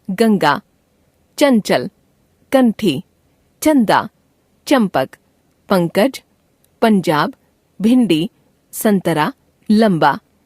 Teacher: अनुस्वार जिस व्यंजन के पहले आता है उसी व्यंजन के वर्ग के नासिक्य के रूप में इसका उच्चारण किया जाता है।